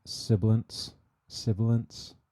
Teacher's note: this mic on one two sibilance sibilance so you can see all my s's are very kind of prominent around 5k